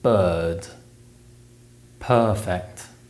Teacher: about the uh sound is produced in the same way but it's a long sound and it only appears in the stress syllables of words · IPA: /ɜ:/